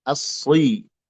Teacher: dibaca tebal huruf sad dari as-sirata, as-si, tebal, ya.